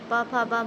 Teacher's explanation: प, फ, ब हमारी क्या हो जाती हैं? ओष्ठ ध्वनियां हो जाती हैं।